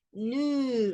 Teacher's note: Y la S de nous no se pronuncia